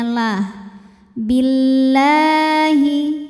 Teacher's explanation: terakhir belakangan ya yusyrik yusyrik Billahi lam jalalah dibunyikan secara tarqik karena huruf sebelumnya berharakat kasrah maka lam dibaca tipis jadi bunyinya la Billahi kemudian Alif lamnya dinamakan dengan alif lam